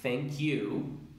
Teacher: se une directamente a la segunda palabra que es el you